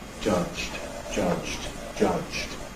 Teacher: Indeed, if we say this word in isolation, there's no voicing during the friction of the affricate